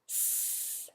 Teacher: the sound associated with the plural meaning as S, the voiceless alveolar sibilant fricative